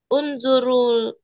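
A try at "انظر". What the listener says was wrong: Nggak, undur. Undur. Dia undurnya berhenti ya. Undur.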